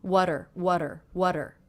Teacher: here is now coming between two vowel sounds and I'm making that a flap T sound which sounds like the D between vowels